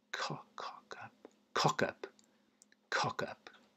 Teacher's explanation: I suppose that off sound isn't very round. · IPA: /ˈkɒk.ʌp/